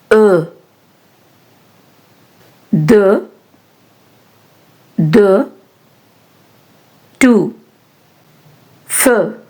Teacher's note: when you pronounce the closed e u sound, your mouth should be more closed.